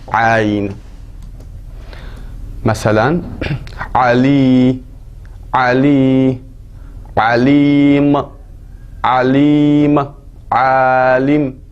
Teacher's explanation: Və ərəblər boğazlarında gətirir əli.